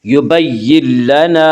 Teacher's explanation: یبین لنا میں ادغام بلا غنہ ہوگا